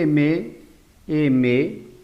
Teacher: tanto decimos que la m es vi labial vi labial además al pronunciar la m y prolongarlo vamos a percibir que hay vibración de las cuerdas vocales · al pronunciar la consonante vamos a notar que gran parte del aire sale por la nariz por eso la m es nasal · al pronunciar la m notamos que se juntan los dos labios por lo tanto decimos que la m es vi labial vi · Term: sonoro